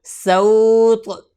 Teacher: آگے پڑھتے ہیں سین واو زبر سو، طا زبر طا، سو طا سو طا، اور وقف کریں گے سوط. طا کے اوپر قلقلہ بھی کرنا ہے